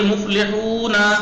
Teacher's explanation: اب واو اتنا نہیں کھینچ رہی بس پیش کا ڈبل کھینچ رہی ہے